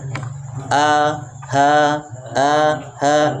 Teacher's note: tenggorokan bagian bawah terdapat dua huruf di situ ada Hamzah dan ha